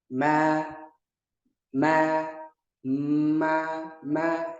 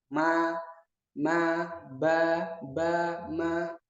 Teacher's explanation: itu benturan antara bibir atas dengan bibir bawah huruf mim. Yaitu berbenturannya dua bibir, ma, ba, ma.